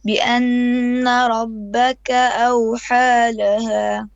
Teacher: Your nun shadda, 2 beats of ghunna minimum, a bit longer.